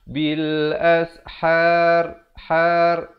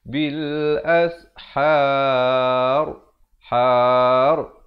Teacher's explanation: Ra ni dibaca tebal. Jangan pula kita baca bil ashar.